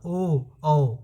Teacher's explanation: इसमें कंठ से भी आवाज निकलता है और दोनों ओठ का भी प्रयोग हो रहा है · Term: कंठ और ओठ